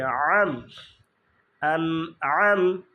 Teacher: এই আনাম আনাম হয়ে যায়, আনাম আনাম না, আন আম, আনে একটু থামবো, আম, আইন দিয়ে কণ্ঠনালীকে চেপে আম, আন আম, প্রথমটা আলিফ বা হামজা উচ্চারণ আন, তারপরে তারপর আইনে উচ্চারণ আম, এই জায়গাটা সবচেয়ে বেশি ভুল হয়।